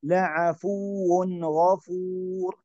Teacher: نأتي بالنبر على الواو لأنه مشدد